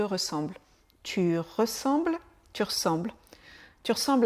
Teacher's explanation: on fait une petite contraction du e de ressemble